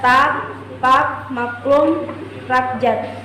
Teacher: bunyi hamzah yang bunyi sentak